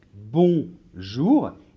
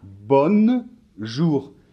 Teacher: dans les nasales, on ne doit pas prononcer le N, la lettre N